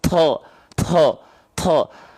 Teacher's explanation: masih banyak orang yang melafalkan huruf to, jangan sampai ada keluar nafas ya. To. To nggak punya sifat hams, hati-hati. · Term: jahar